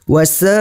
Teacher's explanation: hukum bacaannya adalah mad wajib muttasil, dibaca sebanyak 5 harokat.